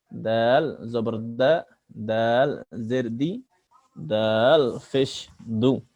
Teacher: দাল জিহ্বার আগা সামনে নিচের দাঁতের গোড়া থেকে দাল অক্ষর স্বাভাবিকভাবে পড়তে হয়।